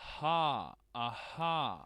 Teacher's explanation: ele é feito dessa forma aspirada, que é aqui na sua glote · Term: R de Pernambuco